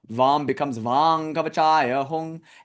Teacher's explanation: And of course, if you want to follow some Sanskrit rules like Vam, because it comes before the Kavacha word, before Ka, that M will sound like an NG sound.